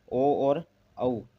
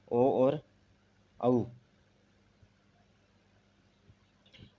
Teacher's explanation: कंठ प्लस ओष्ठ कंठ प्लस ओष्ठ से इनका उच्चारण होता है और उच्चारण स्थान की बात करें तो कंठोष् इनको कहते हैं।